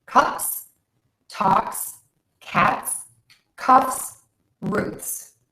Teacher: A lot of my clients will say these sounds are quieter, and if that's the way you need to think about it, then that's fine, but these are voiceless sounds, and we add another voiceless sound to make them plural